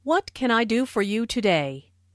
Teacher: this question starts with what so the intonation drops at the end of the question